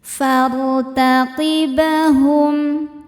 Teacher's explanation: Fartaqib, kemudian ba sukunnya dihukumi qalqalah sughra karena ba sukunnya sukun asli dan ada di tengah bacaan ya. Maka ba dipantulkan dengan pantulan yang kecil. Fartaqibahum, hum ada hukum izhar syafawi karena mim sukun menghadapi huruf selain mim dan ba yaitu huruf waw.